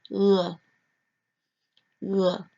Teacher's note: It's a sound that you kind of make at the back of your throat, as if you're saying the French R, which is pronounced R, but you don't make it so strongly. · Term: softer R